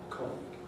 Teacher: Colleague, stressed on the co, but the E remains strong.